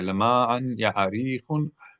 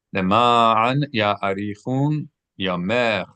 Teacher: No, I got the accent wrong. Normally in Hebrew, we would say ya'arichun, but the accenting here is at the end.